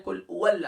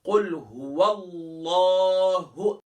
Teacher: قل هو اللہ، اکثر پڑھتے ہیں کل او اللہ، او اللہ، او اللہ نہیں ہے، ہا ہے، ہا کو گلے کے باٹم سے ادا کریں گے. قل هو اللہ واللہ احد.